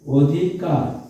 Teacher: অধিকার আমরা কিন্তু অধিকার মুখে বলি অধিকার, কিন্তু লেখার সময় কি লিখি, সরি আমরা যখন লিখি তখন লিখি অধিকার, কিন্তু উচ্চারণ যখন করি তখন কিন্তু এরকম করে উচ্চারণ করি অধিকার, অর্থাৎ অর উচ্চারণটা ও এর মতন হয়ে যায়। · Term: সংবৃত